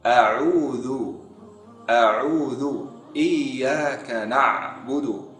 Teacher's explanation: Huruf Ain dikeluarkan dari tenggorokan bagian tengah dekat dari ha